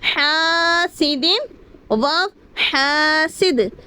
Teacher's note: الف مدہ ہو رہا ہے، یہاں پر ایک الف کھینچ کر پڑھیں گے